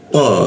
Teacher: huruf th itu ee lidahnya dilengkungkan di belakang gigi atas ya